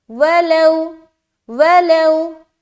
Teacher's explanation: واو ساکن سے پہلے زبر ہے تو واو لین ہو رہا ہے, نرمی کے ساتھ جلد ادا کریں گے